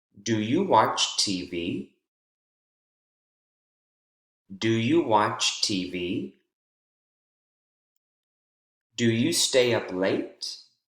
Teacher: All 4 of those questions, the focus word at the very end has rising intonation.